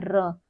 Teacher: यह हमारी तालु से स्पर्श होकर लुढ़क जाती है नीचे। इसलिए उसे लुंठित वर्ण कहते हैं।